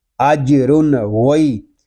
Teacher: غین حروف مستعلیہ میں سے ہے، غین کو ہم پر پڑھیں گے